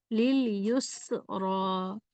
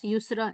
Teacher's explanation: क्योंकि आम तौर पर लोग इस सीटी को अदा नहीं करते, बस युसरा इस तरह पढ़ देते हैं, लेकिन सीटी की आवाज़ अदा करनी चाहिए क्योंकि ये सीटी वाला हर्फ है